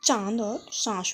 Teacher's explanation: अनुनासिक का प्रयोग यानी नाक और मुंह दोनों का प्रयोग हुआ है